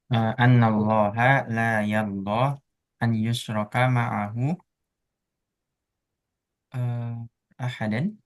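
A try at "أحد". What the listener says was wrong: kalau ahadan ada alif setelahnya ya. Ini kan berarti hanya dua kemungkinan, ahadun atau ahadin. Kalau ahadan, dia ada alif setelahnya. ahadun.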